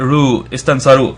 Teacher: And then the sad is on its own, and that's voweled with the fatha, so istansa. And then the ra is prolonged with the waw, so we get ru